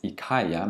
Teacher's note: In some cases, you don't hear the ili anymore.